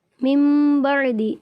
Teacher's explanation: نون ساکن کے بعد با حروف اقلاب میں سے آ گیا ہے، اس لیے اس نون کو اس میم سے بدل کر پڑھیں گے